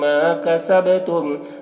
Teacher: با میں قلقلہ کریں گے، با حروف قلقلہ میں سے ہے